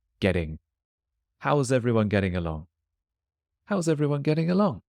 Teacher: it's a case of the double T becoming more like a D, so getting.